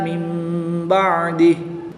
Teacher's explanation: نون ساکن کے بعد حرف با ہے تو یہاں پر اقلاب ہوگا، یعنی نون ساکن کو میم سے بدل کر غنہ زمانی کر کے پڑھیں گے۔